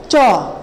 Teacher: জিহ্বার অগ্রভাগ আমাদের উপরের তালুটাকে স্পর্শ করার ফলে এই ৫টি বর্ণ উচ্চারিত হয়। যে কারণে এদেরকে বলা হচ্ছে তালব্য মূলীয় বা তালব্য তালব্য মূলীয়।